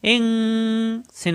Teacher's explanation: নুন সাকিনের পরে আসছে সিন ইকফা গুন্না হবে